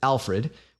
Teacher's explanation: In this case, what we're seeing is a documented rule called vowel reduction in unstressed syllables. In this word, the stress lands on the first syllable, alf. So people got a little lazy with the second syllable and the vowel got shortened.